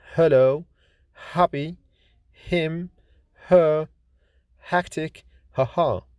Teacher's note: Ng or ny is voiced velar nasal consonant like in sing, ring, long, song, wrong, doing, living. H is voiceless glottal fricative consonant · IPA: /h/